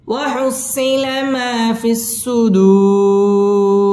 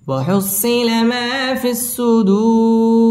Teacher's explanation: সুদু পেশের বাম পাশে জজম ওয়ালা ওয়াও মদের হরফের বামের হরফে ওয়াকফ মধ্যে আরজি তিন আলিফ টান দিয়ে ওয়াকফ করতে হবে